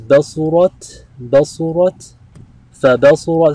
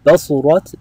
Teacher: This is after the pattern فَعُلَتْ. We hear the t at the end, the ta sakina.